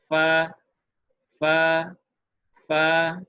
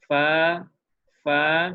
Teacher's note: bibir bawah ketemu dengan ujung gigi atas